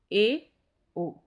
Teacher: इन स्वरों के उच्चारण में मुख द्वार आधा बंद रहता है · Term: अर्धसंवृत